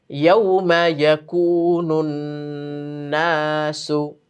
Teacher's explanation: ইয়াউমের মধ্যে কিন্তু কোনো টান হবে না, কারণ জবরের বাম পাশে ওয়াও। যদি পেশের বাম পাশে ওয়াও হয় তখন হচ্ছে জজমওয়ালা ওয়াও হলে একালিফ টান হবে, কিন্তু জবরের বাম পাশে হলে লিনের হরফ হয়ে যায়, তখন আর টান নেই।